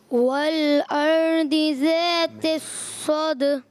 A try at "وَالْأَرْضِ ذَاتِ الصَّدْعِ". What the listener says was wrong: صاد کو موٹا رکھیں گے، صاد کو بھی موٹا رکھیں گے.